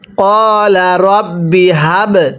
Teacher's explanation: এরপরে কফ আলিফ জবর ক, লাম জবর লা, কলা, র বা জবর রব, বাজের বি, রব্বি, হা বা জবর হাব। বায়ে যদি সাকিন হয় কলকলা করে পড়তে হয়